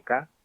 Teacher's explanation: Típico de todo el andaluz es la pérdida de todas las consonantes finales de sílaba.